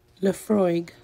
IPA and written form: ləˈfrɔɪɡ (Laphroaig)